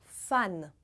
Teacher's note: em francês o A é bem aberto